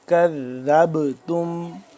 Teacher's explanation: کذبتم، ذال با زبر ذب، جب آگے ذال مل رہا ہے با کے ساتھ تو یہاں اس با پہ قلقلہ ہو رہا ہے